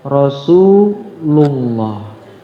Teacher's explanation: Kemudian lafal Allah juga lafal lafzul jalalah apabila sebelumnya berharakat domah maka juga dibaca tebal. Contohnya Rasulullah ya tebal.